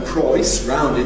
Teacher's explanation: either [prɒɪs], rounded, that’s really Cockney